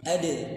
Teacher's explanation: Dal ini makhrajnya di mana? Ujung lidah dengan pangkal gigi seri atas. Pangkalnya tempat tumbuh giginya. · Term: qalqalah